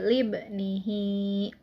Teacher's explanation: Karena huruf H itu bertemu dengan huruf selain hamzah. Cara membacanya yaitu 2 harokat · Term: madsilah qasiroh